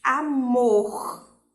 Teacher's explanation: o mor é mais forte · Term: oxítonas